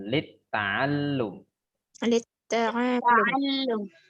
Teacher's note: pada kata lam setelah ain itu ada tasdid, maka harus ditekan cara bacanya